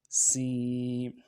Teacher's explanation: یا مدہ ایک الف مقدار میں کھینچیں گے